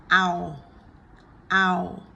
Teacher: it's a diphthong, so it's a combination of the ah as in cat and the oo as in book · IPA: æʊ